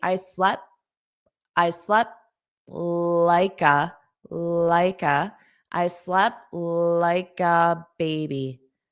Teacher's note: But when I pronounce the the word in a sentence, I don't want that puff of air because it forces a pause. So, I'll just do a flap T.